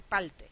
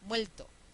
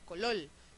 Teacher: políticos, cirujanos, PhDs de todo el Caribe pronuncian la R final como L · la R y la L pasan a ser el mismo sonido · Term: neutralización